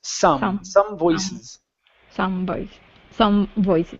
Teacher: instead of zum voices give me an unvoiced S